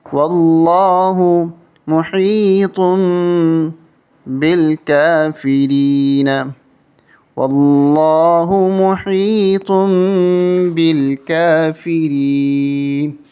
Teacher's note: تنوین کو کنورٹ کر کے چھوٹی میم کے ساتھ پڑھا جاتا ہے. تو یہاں پر ہم پڑھیں گے محی تم طا کو میم کے ساتھ ملا کے پڑھیں گے، دو تنوین کو ختم کر دیں گے.